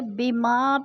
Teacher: بما پہ الف مدہ ہے، الف مدہ کو ایک الف دو حرکات کے برابر کھینچ کر پڑھنا ہے